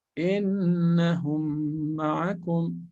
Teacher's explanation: Shafawi. Idgham of the two lips, the merging of the two meme of the lips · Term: idgham shafawi